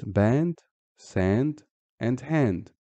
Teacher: So there is a slight extension or lengthening of pronunciation the same way that aleph extends the fatha before it from ba to ba. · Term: long vowels